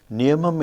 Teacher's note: Niyamam, in which there is no long vowel. So the first syllable is stressed because you couldn't find any long vowel.